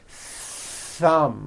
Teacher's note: You must stretch out the TH sound and hear the air friction.